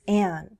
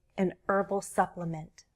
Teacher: I don't pronounce the h in herbal. I speak American English.